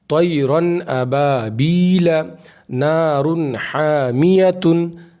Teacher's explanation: देखिए यहाँ पे इजहार होगा इसलिए कि तनवीन के बाद हमज़ा आ रहा है, इसको साफ साफ पढ़ना है, बगैर गुन्ना के साफ साफ ज़ाहिर करके पढ़ना है